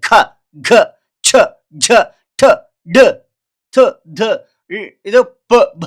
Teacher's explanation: ಇಲ್ಲಿ ಉಸಿರು ಬಡಿತದೆ ಕೈಗೆ ಅದನ್ನ ನಾವು ಏನಂತೀವಿ ಮಹಾಪ್ರಾಣ ಅಕ್ಷರಗಳು